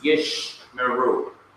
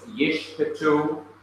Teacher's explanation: the first shewa closes the one syllable and is therefore silent, while the second shewa begins the next syllable and is therefore to be pronounced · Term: simple Shewa